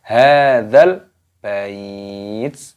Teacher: Dalnya di sini meskipun mad tabi'i ada tanda alifnya, namun di sini ada alif lam qamariyah, lamnya sukun, maka tidak dibaca panjang, langsung dimasukkan ke dalam lam. Hadzal bait, taknya sukun.